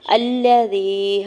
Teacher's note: یا ساکن سے پہلے زال کے نیچے زیر ہے یا مدہ ہو رہا ہے، دو حرکت کھینچ کے ادا کریں گے